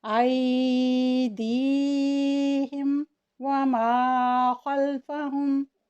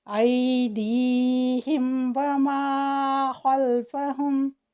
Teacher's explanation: मीम को साफ पढ़ेंगे और इसमें गुन्ना नहीं होने देंगे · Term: इज़हार शफ़वी